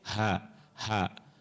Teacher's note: Bukan tapi hak. Hak itu makhrajnya di tenggorokan paling bawah. Hak. Ya.